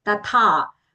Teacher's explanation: First the tha is alpaprana, ta. Then the tha that is coming after that is long and mahaprana.